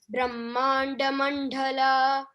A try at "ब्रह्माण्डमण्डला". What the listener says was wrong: The D sound is pleasant. We don't have to stress too much. Brahmandamandala. When we keep H next to any letter, then we stress it more. This is to denote D sound. And when there is small d, it is the sound. The, like drishya, dhyana. So, but here after small d there is H. So, we stress the dha.